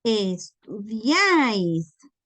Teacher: Como la fuerza de voz está en la vocal A, no se pueden ir solitas las I por su lado porque no tendrían fuerza. Tienen que mantenerse unidas a la vocal fuerte. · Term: triptongo